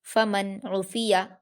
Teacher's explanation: नून साकिन के बाद आइन आया है जो कि हुरूफ इजहार में से है, इसलिए नून साकिन की आवाज़ को जाहिर करके बगैर गुन्ना के जल्दी पढ़ा जाएगा। फमन उफिया, आइन पर हरकत जल्दी पढ़ेंगे, फा और या पर हरकतें इन्हें भी जल्दी पढ़ेंगे।